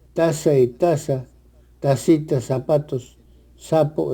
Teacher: la c s Z suena como s sin ninguna diferencia sobre todo en América Latina